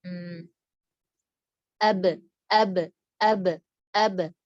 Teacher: Getarannya di tenggorokan tapi nggak ada angin. Ab. Kalau ada angin, berangin banget gitu, itu salah.